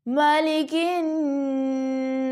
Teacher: کاف باریک ہے اور اس کو ہم نون مشدد سے جوائن کر رہے ہیں، تو نون مشدد پہ 1 سیکنڈ کے لیے غنہ ہوگا اور اس کی الف مدہ ہے، اس کو بھی کھینچا جائے گا، مالک الناس۔